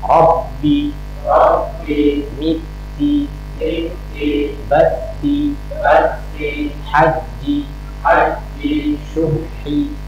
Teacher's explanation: Kasroh itu diucapkan dengan lidah tengah itu diangkat